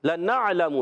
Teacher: نون کو عین سے ملانا ہے، دوسرا لام بھی متحرک ہے اور میم پر پیش ہے، حرکات کو بغیر کھینچے ادا کریں گے